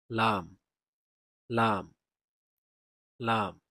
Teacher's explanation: লাম উচ্চারিত হবে জিহ্বার আগার কিনারা সামনের উপরের দাঁতের মাড়ির সঙ্গে লাগিয়ে লাম উচ্চারিত হবে।